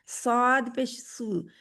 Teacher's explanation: जुबान की जड़ पीछे से ऊपर उठती है और स्वाद को मोटा कर देती है।